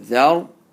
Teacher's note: Thal, ra, zabr, dhar. So ra sakin with a zabr before it, you have to pronounce it with the full mouth.